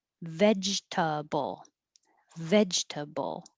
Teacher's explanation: we don't say that middle e